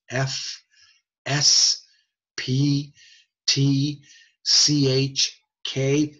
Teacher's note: unvoiced they are non periodic they are noises they are high frequency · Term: unvoiced consonants